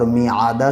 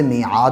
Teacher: دال کے اوپر زبر ہے، زبر کو جلدی ادا کریں، تھوڑا بھی نہ کھینچیں، اور جب وقف کرتے ہیں تو دال کا جو زبر ہے وہ گر جائے گا اور میعادہ سے میعاد ہو جائے گا۔